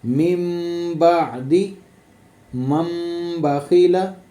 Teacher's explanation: तो नून साकन के बाद जब बा आ जाए तो हमने इकलाब करना है, मतलब नून साकन को बा में मीम में बदल कर, नून साकन को मीम में बदल कर पढ़ना है